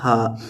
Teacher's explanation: اس کا مخرج ہے حلق کا آخری حصہ جو سینے کے ساتھ متصل ہے، وہاں سے یہ ادا ہوتا ہے